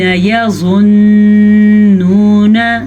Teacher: نون کے اوپر غنہ ضرور کریں کیونکہ نون پہ شد کی وجہ سے غنہ پیدا ہو رہا ہے. ساتھ ہی واو مدہ بھی ہے.